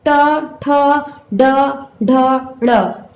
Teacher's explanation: जब आप बोल रहे हैं ट ठ ड ढ ड़, तो देखिए जबान आपका ऐसे हल्का से मुड़ जा रहा ना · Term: मूर्धन्य